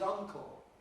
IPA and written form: ˈʌŋkl̩ (uncle)